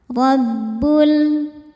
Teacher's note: ro dibaca tafkhim karena berharakat fathah maka rnya tebal. Rabbul.